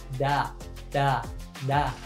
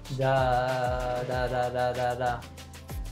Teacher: To make this sound, the tip of your tongue touches behind your teeth, and it's a really quick movement. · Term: American T